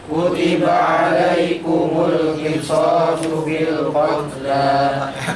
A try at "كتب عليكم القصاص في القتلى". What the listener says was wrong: kotel masih ada kotel saya dengar baru loh belum dihapus loh dan belum keluar dari ruangan ulangi ini ntar kalau khawatirnya baca sendiri